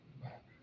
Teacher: Un español tal vez dirá vaca, con B labidental. Nosotros la diremos con B bilabial